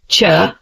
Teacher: these sounds are made when the air flow stops but also has slight friction as it is released